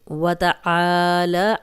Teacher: آئین کی کلیئر آواز آئے گی، اس کو حمزہ نہیں بنانا اور الف مدہ ہے، خالی الف، پیچھے آئین پہ زبر، تو